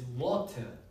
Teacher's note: But in the British accent, we actually pronounce it with the T, which is an alveolar stop. So when you pronounce the T, you're making a complete closure between your tongue and alveolar ridge.